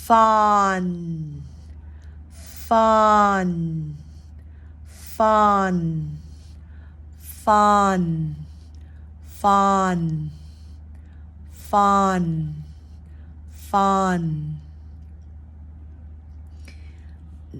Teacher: an F at the beginning instead of just the a here we've got the f f voiceless so it's a almost a whisper